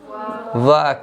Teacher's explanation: व के उच्चारण करने में दांत भी लगेगा और ओठ भी लगेगा। दांत भी लगेगा और ओठ भी लगेगा। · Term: दंत ओष्ठ